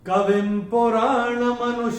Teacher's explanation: अनुस्वार के बाद जब प आएगा तो अनुस्वार का उच्चारण होगा म।